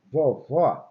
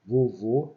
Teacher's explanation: Vovó, acento agudo, timbre aberto. Vovô, acento circunflexo, ele tem um timbre fechado.